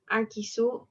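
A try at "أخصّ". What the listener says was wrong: Aksu bukan akisu, aksu.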